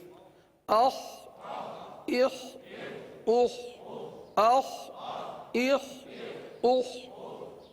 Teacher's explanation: لہذا خا کو حلق سے ادا کریں گے اور یہ حرف پر ادا ہوتا ہے، لہذا پر ادا کریں گے.